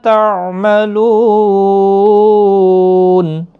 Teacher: نون جب وقف ہو جائے گا ساکن ہو جائے گا وقف کی صورت میں تو 3 سے 5 الف کی مقدار کے برابر کھینچ کر وقف کریں گے